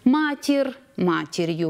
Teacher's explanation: Матір'ю буде «р» і «й», поряд два приголосних